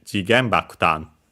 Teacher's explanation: So yeah, with such compounds in general, but we have the confirmation for this one. The accent then is on the first syllable of the second word.